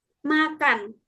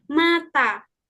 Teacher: The word makan, the A before the K sounds slightly shorter than the A in the word mata. Like makan, karena K jadi A-nya lebih short, makan.